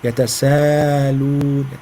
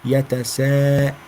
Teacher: The hamza, especially if it is after mad letter, it's vulnerable to be hidden.